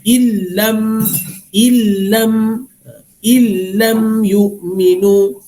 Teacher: Okey, kakak diam kakak, jangan bising. Dia illam, nun mati dengan lam, asalnya in lam, tapi bila bercampur dengan lam dia akan jadi illam. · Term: idgham bila gunnah